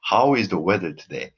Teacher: so the intonation go straight or sometimes go even down